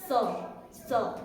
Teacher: दंत के साथ हमारी जीभ लगती है